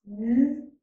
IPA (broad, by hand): n